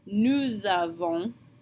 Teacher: So remember, we have that liaison between the nous and the avons, since avons begins with a vowel. So we're going to smash the two words together and pronounce the S on the end of nous like a Z